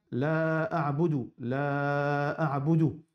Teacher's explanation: Nous n'avons pas le droit de prononcer avec seulement, veut dire, un seul, comment dire, fatha. Nous avons besoin de faire mad au moins, veut dire 6 ou bien 4.